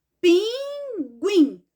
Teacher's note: E qual é a sílaba mais forte? É o guim.